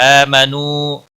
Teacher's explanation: حمزہ کے اوپر کھڑی زبر ہے، ایک الف کے برابر کھینچ کر پڑھیں گے. نو واو مدہ ہے ایک الف کے برابر کھینچ کر پڑھیں گے.